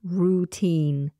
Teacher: Make sure that you're pronouncing that first vowel as /uː/ not /raʊ/, /ruː/ — routine.